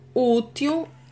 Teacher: Útil, a sílaba tônica é u. Então, última, penúltima, quando a penúltima sílaba for a mais forte, ela é classificada como paroxítona.